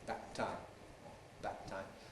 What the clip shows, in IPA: ˈbæʔ ˈtaɪm